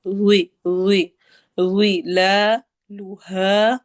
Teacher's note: لا اور ہا دونوں لمبے ہوں گے، ہا پہ الف مدہ ہو رہی ہے، دو حرکہ لمبی ہوگی